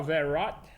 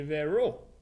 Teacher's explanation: c'est un consonant au bout d'un mot qu'il ne prononce pas